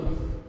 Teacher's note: अन नून मुशद्दद है, गुन्ना करेंगे, नोज में साउंड लेके जाएंगे।